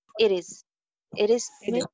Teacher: Ke baad e sound hai, yani vowel sound hai, so it is flap T.